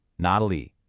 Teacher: So, Mandarin has a rule. When 2 3rd tones are together, the first one automatically changes into a 2nd tone, a rising tone. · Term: tone sandhi